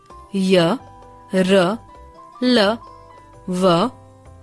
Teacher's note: इन वर्णों का उच्चारण करते समय जीभ मुख के किसी भी भाग को पूरी तरह स्पर्श नहीं करती श्वास की अंत गति होती है यह संख्या में चार होते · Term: अंतस्थ व्यंजन